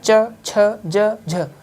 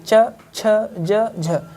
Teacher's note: हल्की सी जीभ तालु में टच हो रही है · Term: तालव्य